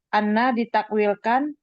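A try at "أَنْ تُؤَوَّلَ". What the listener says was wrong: atau an itu bukan tasydid itu. Afwan ya, anak koreksi dulu. An bukan anna.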